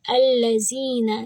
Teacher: یا سے پہلے زیر ہے تو یہ بھی ہے مد طبعی، 2 حرکہ آواز لمبی کریں گے تو ہم یہاں پر بھی ہلکا سا نشان لگا دیں گے تاکہ ہمیں یاد رہے کہ زی 2 حرکہ ہوگا اور نون 1 حرکہ۔